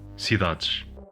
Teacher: Orthographic s and z are rendered as sh and j in some contexts. Before a voiceless consonant or before a pause, sibilants are pronounced sh.